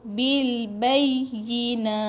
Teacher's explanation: Bil, matikan lam. Bil bay, tekan ya sebab ya sabdu.